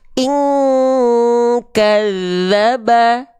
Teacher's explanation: dengungannya kuat, ing, semuanya masuk hidung.